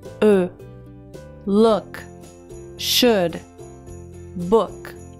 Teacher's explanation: preparar os seus lábios para dizer U, porém na hora você fala o schwa, com os lábios ainda na posição do U.